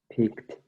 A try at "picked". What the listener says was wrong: Ya, cuidado con tu I. Picked.